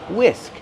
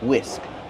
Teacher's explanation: The H is silent. Just use the W sound.